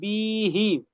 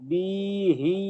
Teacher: বিটা টান দেওয়া যাবে না, বিটা হারাকাত, হিটা টান হ্যাঁ, দিতে হবে